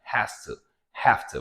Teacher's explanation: But again, it's not have to, it's not has to, okay? It's an easy and slight aspiration, right?